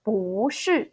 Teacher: we don't pronounce our 不 as a fourth tone as it is shown. You actually need to pronounce it second tone. So it will be 不是 second, fourth.